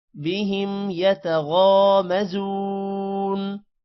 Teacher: غا لمبا ہوگا اور زو بھی لمبا ہوگا